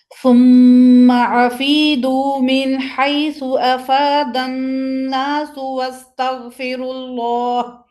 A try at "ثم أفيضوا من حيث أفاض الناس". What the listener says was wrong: اچھا بیٹا دیکھو، ضاد سمک افیضوا، آپ کو پتہ ہے ضاد حروف مطبقہ میں سے ہے، ٹھیک ہے؟ موٹا اور بھرا ہوا، تو اس میں کوشش کریں، جتنی کوشش کر سکتے ہیں.